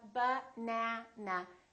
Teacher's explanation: has three syllables let's take a look so we have banaana this second syllable is stressed that means this vowel is going to be much longer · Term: vowel length